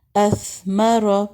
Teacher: Next ہم ساکن کے ساتھ دیکھتے ہیں اثمر اثمر. سا کے اوپر ہمس ہوتا ہے اور اس پہ آواز جاری رہے گی.